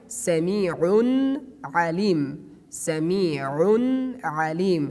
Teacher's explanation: Here again we have a tanween at the top of ain, but after tanween we have another ain. That's why that we pronounce the tanween frankly.